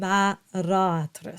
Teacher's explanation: we have the open A at the beginning of the word and then we have the closed A at the end